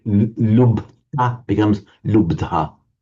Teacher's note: the Ta of the past participle mutates to a da and then the aspiration shifts. So instead of from the from the b to the d.